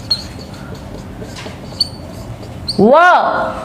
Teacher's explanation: नवे नंबर पे दंत और ओष्ठ, व